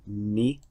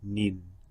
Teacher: Again, we want the students to connect kasra with kasratain because they're drawn in the same place beneath the letter, and they have the same initial sound, but we're adding a nasal sound to tanween, in. Instead of ni, we have nin.